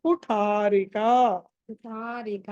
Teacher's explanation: ఠ ఒత్తి పలకాలి మహా ప్రాణం